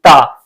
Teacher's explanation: जब आप ता बोलेंगे तो आपकी जो जीभ है आपके दांत को स्पर्श करेगी